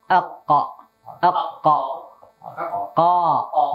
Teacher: lidah paling jauh maka hampir nempel dengan tenggorokan